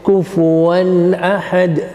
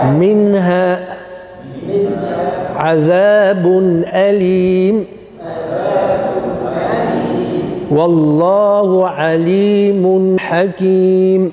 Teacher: You recite without a nunation, without a delay. Of course, we mean by that the natural noon will be implemented. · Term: izhar